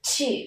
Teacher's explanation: Âm T, các con bật hơi mạnh lên và âm U chúng ta kéo dài thành two.